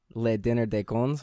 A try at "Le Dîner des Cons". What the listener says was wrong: You don't pronounce the S. Le Dîner des Cons.